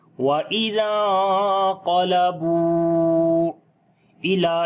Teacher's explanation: وا کو لمبا کریں گے، واو مدہ ہے، اور واو مدہ کے اوپر چھوٹی مد ہے جو کہ مد منفصل کی ہے۔